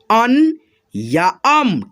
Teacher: यानी कि अन है, ये अ है, और अ पे देखो यहाँ पे अनुस्वार लगा है, तो इसको आधा न और आधा म पढ़ते हैं